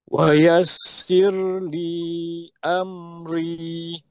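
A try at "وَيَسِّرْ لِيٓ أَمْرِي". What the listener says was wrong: Li itu panjang tu. Tekan pada am tu dan ri. Ri tekan pada pertengahan. Hamzah tekan ya. Amri.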